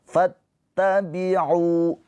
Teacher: alifnya jangan dibaca panjang ya f-nya langsung ke ta ada tasdid jadi fa ini langsung ke ta fattabiu u ini dibaca panjang karena ada wau sukun Karena unnya ini harakatnya domah bertemu dengan wau sukun.